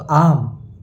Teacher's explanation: 2 मात्रा काल का समय लगाएंगे क्योंकि आ दीर्घ स्वर है